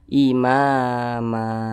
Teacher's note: Kemudian ma, dia ini tanwin, seharusnya kan dibaca man, tapi kalau kita berhenti pada huruf mim ini, maka huruf mim ini dibaca panjang, kemudian n-nya dihilangkan, jadi dibaca imama. Ini namanya mad iwad. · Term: Mad Iwat